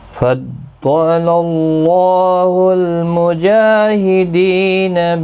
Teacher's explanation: ضاد حروف مستعلیہ ہے، پر پڑھا جائے گا، اللہ کا لام زبر کی وجہ سے پر پڑھا جائے گا، اس کے اوپر کھڑی زبر بھی ہے، ایک الف کی مقدار کے برابر کھینچ کر پڑھیں گے۔